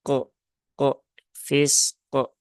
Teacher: jadi pantulan Q itu bukan Q tetapi q q fisq ya tunaikan dulu sifat rakhaah dari huruf Sin kemudian tunaikan sifat syidah huruf qf setelah itu Munculkan ee qalqalahnya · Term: qalqolah